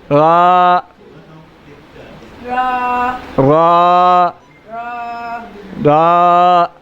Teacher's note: را کو 1 الف کی مقدار جتنا لمبا کریں گے.